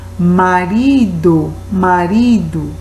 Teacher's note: Você vê que você demora um pouquinho mais na sílaba ri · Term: sílaba tônica